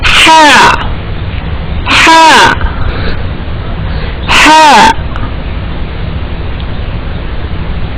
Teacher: this Ha belongs to the middle part of the throat, and the round Ha is belong to the lower part of the throat, and the difference is you have to make the sound very stressfully, right?